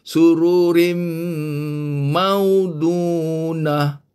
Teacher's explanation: rin dah tak boleh bunyi rin, kena bunyi rim, kena masukkan bunyi mim, rim mau, macam ini kan, min, ini min, jadi mim, seolah-olah nun tak ada, seolah-olah ni tanwin pun dah terus masuk mim, jadi mim, sama macam ini, sururim maudunah. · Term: idgham bigunnah